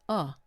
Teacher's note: But it's the most common vowel sound in American English. It's a very relaxed vowel and it doesn't appear in a lot of other languages. Now, the schwa sounds like uh just a very relaxed sound.